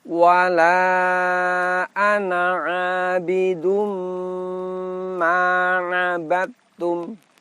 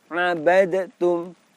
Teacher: Karena telah dileburkan, maka baik makhraj ataupun sifat dari huruf dal hilang semuanya, melebur ke huruf ta · Huruf dalnya kita idghamkan, kita leburkan ke huruf ta.